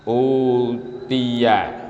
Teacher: ada bacaan di mana di situ bertemunya hamzah dengan huruf mad, sehingga huruf hamzah ini kemudian dihilangkan dan diganti dengan bacaan mad atau bacaan panjang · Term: mad badal